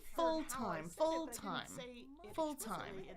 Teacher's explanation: Dark L, the darkness comes from the fact that the L is in the back. · you can stress them equally. So, two vowels. Both of them are strong as strong as the other one.